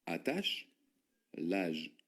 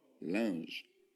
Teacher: Y son dos sonidos distintos. La CH es sh, y el otro es z